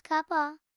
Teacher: The F sound in of is dropped